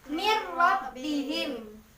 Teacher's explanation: Kalau dia idgham bila guna berarti dia tanpa dengung. Jadi bacanya mir rabbihim.